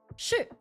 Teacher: And then the fourth tone is sh. So straight going down sh which can be used as an affirmation.